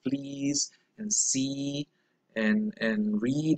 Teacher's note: So that's why we call it also tense. And it's also unrounded because there is really no rounding of the lips when you produce it. So the full description would be a front, high, tense, unrounded vowel sound. · The full description for that vowel sound is front, high, tense, unrounded. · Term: long e, long E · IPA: [i]